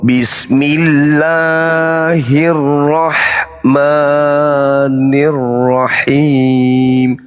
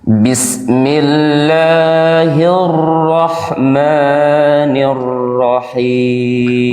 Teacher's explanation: Jadi huruf rnya itu menjadi dua atau bisa sampai tiga itu namanya tasdid